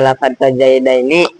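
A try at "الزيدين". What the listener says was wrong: Bukan maka bermula lafaz fazaidaini, maka bermula lafaz az-zaidaini. Nah, gitu jangan fa-nya kamu ikut baca ya rancu.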